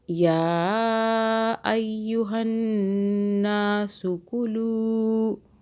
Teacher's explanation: نون مشدد پہ گنہ کریں گے. کچھ دیر کے لیے ناک سے ہولڈ کر دیں گے ناک میں